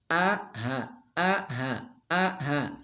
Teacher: hamzah dengan ha satu tempat adanya di aqsal halqi, jadi di pangkal tenggorokan